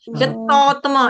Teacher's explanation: य के बाद जो त है वो डबल त नहीं है। यतात्मा यतात्मा यतात्मा सिंपल फ्लो में यतात्मा कोई दबाव नहीं डालना।